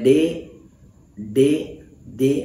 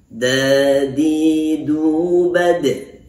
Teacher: Nah, kita huruf dal ini harus tepat. Makhrajnya atau tempat keluarnya dari ujung lidah dipertemukan dengan pangkal dua gigi seri atas.